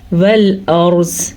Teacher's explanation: را ساکن سے پہلے حرف پہ زبر ہونے کی وجہ سے ہم را کو پر یعنی کہ موٹا پڑھیں گے